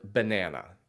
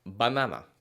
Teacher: in some Spanish-speaking countries you would say banana so notice how with the same word in English we tend to elongate the sound of the word banana but in Spanish it's shorter and more succinct